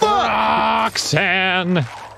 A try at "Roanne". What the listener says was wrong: It's actually a silent X. It's Roanne.